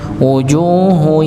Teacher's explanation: u-nya dibaca 2 harakat dikarenakan wawu sukun sebelumnya dhammah pada huruf jim, maka dibaca 2 harakat.